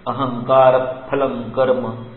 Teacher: फ के पहले विसर्ग है इसलिए फ पर थोड़ा जोर देना है, जैसे कि आप हवा जो है वो फूंक रहे हो, you are blowing the air. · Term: उपदमानीय